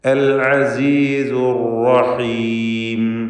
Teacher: തഫ്ഖീമോടെ ഉച്ചരിക്കുക. എന്നാൽ ശദ്ദുള്ള റാ ആയതുകൊണ്ട് വിറപ്പിക്കാതെ അർ എന്നിങ്ങനെ വിറയൽ വരാതെ സൂക്ഷിക്കേണ്ടതാണ്.